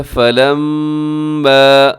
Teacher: اس آیت مبارکہ کے اندر دیکھیے گا فلما، میم مشدد ہے تو غنہ تو آپ ضرور کریں گے یہاں پر